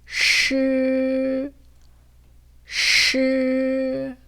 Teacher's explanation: 소리를 길게 내다 보면 으라는 소리가 들리실 거예요.